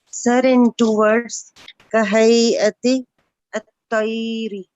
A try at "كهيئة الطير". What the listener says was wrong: Wow, do you have it in Tayri? Only in the hay'a. In طير, there's no hamza.